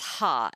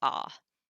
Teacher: So you have a vowel, this alpha here, and it has what's called a rough breathing. That means it's ha and not just ah. But if you have a smooth breathing, then it's just ah.